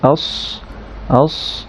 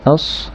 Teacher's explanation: সদের যে বিষয়টা জিহ্বার পিছন সাইডটা একটু উঠে যাবে